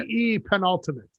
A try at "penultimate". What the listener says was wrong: Stop putting the extra T.